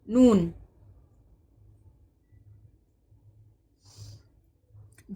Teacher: मीम दोनों होठों के जुड़ने से मीम अदा होता है। नून जबान की नोक ऊपर के सख्त तालों से लगे जब नून अदा होता है · نون جب زبان کی نوک اوپر کے سخت تالو سے لگے، جب نون ادا ہوتا ہے